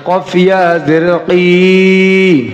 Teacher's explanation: কফ উচ্চারণ হয় জিহ্বার গোড়া তার বরাবর উপরের তালুর সঙ্গে লাগাইয়া